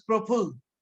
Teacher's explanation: North India utters the same word as praful. They delete the o.